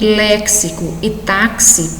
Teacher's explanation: Em léxico e táxi, percebe-se o X com dois sons distintivos, dá para perceber o X com o som de KS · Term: dífono